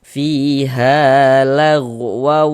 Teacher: ada alif sebelumnya ada harakat fathah, maka huruf yang memiliki harakat fathah tersebut dibaca panjang sehingganya ha kita baca panjang. Mad thobi'i panjangnya dua harakat.